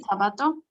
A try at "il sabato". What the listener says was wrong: Il sabato, exactamente.